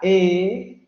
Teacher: su lengua ya no está echada hacia atrás, sino está echada hacia adelante. Y además, la abertura vocal ya no es redondeada, sino que parece más bien como si estuviera sonriendo. Porque ya los labios no están redondeados.